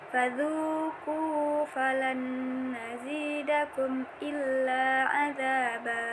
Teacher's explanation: nun sukun bertemu dengan huruf nun. Cara membacanya disertai dengan dengung.